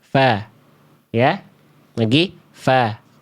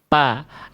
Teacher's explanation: Jadi ujung gigi seri atas kita nempel ke bibir bawah bagian dalam yang basahnya. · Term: huruf fa